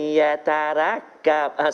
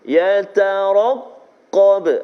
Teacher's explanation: Ra tebal baris atas, qaf juga tebal sebab dia baris atas, dan juga huruf isti'la.